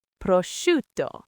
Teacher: So it's not prosciutto, it's prosciutto, with the stress on the shu.